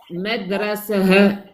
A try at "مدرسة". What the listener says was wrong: Pas ha, c'est ha avec soukoun. Madrasah.